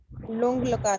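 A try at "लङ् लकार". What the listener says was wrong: हाँ, लुंग लकार नहीं, लंग लकार।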